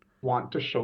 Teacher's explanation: assimilation those two T's want to become one t